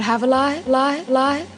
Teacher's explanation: The lighter L was a feature of New York Latino English